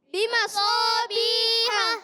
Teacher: بِمَصَابِیحَ، میم پر بھی زبر ہے، اس کو بھی نہیں کھینچنا، مگر صاد، الف زبر صا، الف مدہ بھی ہے، حرف مستعلیہ میں سے بھی ہے صاد، اور حرف مطبقہ میں سے بھی ہے، اور اس کو زیادہ موٹا رکھنا ہے. جی ہاں، اور اس کا الف بھی موٹا ہو جائے گا.